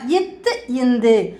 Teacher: நாக்கின் நுனி மேல்வாய் பல்லின் அடி